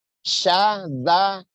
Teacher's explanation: sa sama za itu sama, dia di ujung lidah digigit sedikit.